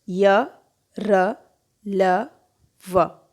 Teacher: इन व्यंजनों के उच्चारण के समय जीभ मुख के किसी भाग से नहीं टकराती। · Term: अंतस्थ व्यंजन